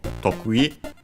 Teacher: the word is accented on the first syllable